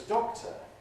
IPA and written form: ˈdɒktə (doctor)